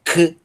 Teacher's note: O ki é o capa aspirado